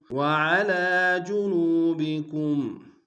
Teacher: وعلى میں عین گہرائی سے ادا کریں گے